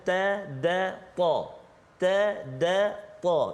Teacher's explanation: Makhraj yang sama, tiga huruf itu ia keluar hujung lidah